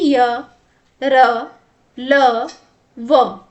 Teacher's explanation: इनका उच्चारण करते समय जीभ जो है मुख के किसी भी भाग से पूरी तरीके से स्पर्श नहीं करती है और ये स्वर और व्यंजन के बीच की स्थिति में होते हैं। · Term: अंतःस्थ व्यंजन